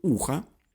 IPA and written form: ˈu.xə (ухо)